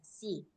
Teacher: nggak bisa dibaca shi karena dia di ujung lidah, si. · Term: sin